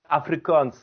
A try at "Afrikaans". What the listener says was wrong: The way you pronounced it, it sounded like Africans, but I can understand why it's no, it's Afrikaans